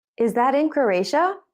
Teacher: you're asking a question to check something or to confirm that your idea is right in this case the question has a rising tone